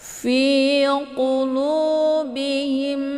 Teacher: Fi qulubihim, fi dibaca panjang 2 harokat karena ini ada ya sukun